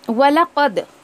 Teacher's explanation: क़द दाल पे भी आपको कलकला करना है क्योंकि फाइल लेटर्स ऐसे हैं जिनके ऊपर अगर साकिन आ जाए तो हमको कलकला करके पढ़ना है, ठीक है।